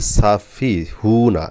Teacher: এই সিনে টান হবে না, ফাতে টান হবে, হাতে টান হবে না।